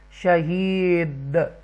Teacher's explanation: یہ حروف قلقلہ بن جائے گا دال وقف کی صورت میں